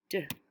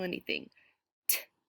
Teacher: If you put your hand on your throat and you make the t sound, you won't feel your voice box vibrating.